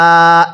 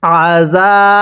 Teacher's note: আইন জবর আ, জাল আলিফ জবর জা, এক আলিফ টান দিব, জবরের পরে খালি আলিফ, এক আলিফ টানতে হয়।